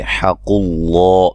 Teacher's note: لفظ اللہ کو موٹا ادا کریں گے، اس سے پہلے پیش ہے